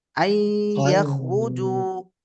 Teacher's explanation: யாவுடைய மஹ்ரஜுக்கு சென்று குன்னா செய்ய வேண்டும் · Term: இத்காம் நாகிஸ் பில் குன்னஹ்